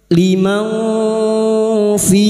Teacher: Pada saat menyamarkan bunyi nun sukun, kita sudah siap-siap untuk membunyikan huruf berikutnya, yaitu huruf fa. Liman fi. Fi bertemunya mat dengan hamzah di lain kalimat mad jaiz munfasil. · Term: ikhfa hakiki